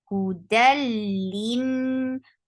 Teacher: Hudalin for kasra, give e sound, lin, and give a nice proper long gunna because this is gunna kamila. Lin na is 2 counts long.